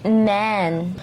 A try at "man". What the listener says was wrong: Sa Pinoy kasi A talaga. Kaya tayo, man. The man standing, ganon ang Pilipino, the man. Pero that's not how you say it in English. It's man.